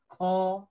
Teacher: कसैले ख भनेर उच्चारण गर्नुभयो भने त्यो के हुन्छ बढी हावा आउँदछ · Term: महाप्राण